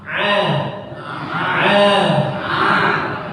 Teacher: Jadi huruf Ain itu dia di tengah-tengah tenggorokan kita